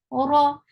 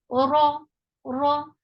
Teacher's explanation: Ra is heavy because whenever ra is with fatha or dhamma, it is heavy. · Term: heavy ra